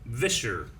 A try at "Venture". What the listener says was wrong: There's an N in there somewhere. I think it's kind of like a venture. But it's like going on an adventure. venture.